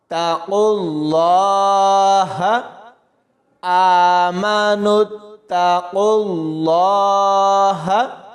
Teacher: قاف کو لام کے ساتھ ملائیں گے، قاف موٹا پڑھا جائے گا اور لام کو بھی موٹا پڑھیں گے۔ اس خالی واو کو اور ان دونوں خالی الف کو بھی یہاں نہیں پڑھنا۔